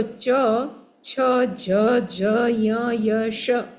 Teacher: પછી બીજા આપણે ક્યાંથી બોલીએ છીએ તો ચ, છ, જ, ય, શ એ આપણા તાળવાથી આપણી જીભ અડે ને ત્યારે બોલાય